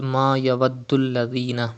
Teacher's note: You can see tashdid on dal. Dal is from kalkala letters and it is mushaddad in this word, so you have to read with emphasis.